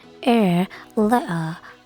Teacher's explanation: bunyi R dalam pengucapan British accent dilafalkan lemah atau samar, sementara dalam American accent dibaca R lebih jelas.